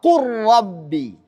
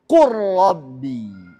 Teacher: jadi bunyi lam pertama tidak terbaca lagi karena kita sudah masukkan ke huruf rnya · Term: idgham